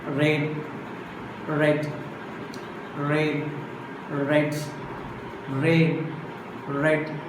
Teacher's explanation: There is no closure or friction, but the sound has a consonantal function. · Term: frictionless consonant